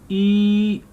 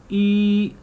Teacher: It's near to close and it's front. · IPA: /i:/